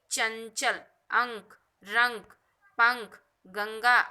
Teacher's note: अनुस्वार, इसका उच्चारण केवल नासिका से होता है, तब ये अनुस्वार कहलाता है।